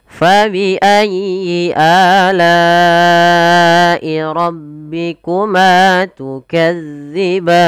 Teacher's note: Sama dengan ayat 47, di lafal fa harus mengalir, pada lafal a ketemu alif ada mad badal. Kemudian pada lafal la'i ada mad wajib mutasil 4 atau 5 harokat yang harus kita panjangkan. Ma ada mad tabi'i, tukadziban ada mad adid sukun.